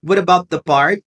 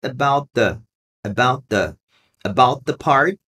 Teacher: quando tem esse T de about e um the, esse T desaparece